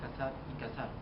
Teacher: en el habla no se distingue entre las letras C, S y Z, y las tres son representadas por el fonema S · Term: ceseo